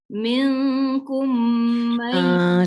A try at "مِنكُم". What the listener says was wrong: Nipis sikit nun dengan kaf tu. Minkum sebab kaf tu huruf nipis.